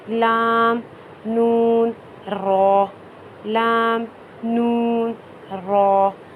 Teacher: 3 ایسے حروف رہتے ہیں جو زبان کے کنارے سے ادا ہوتے ہیں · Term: حروف طرفیہ